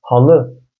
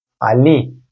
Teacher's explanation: halı derkenki L sesi ile Ali derkenki L sesi aynı değildir. Bir tanesi kalın, bir tanesi ince L'dir.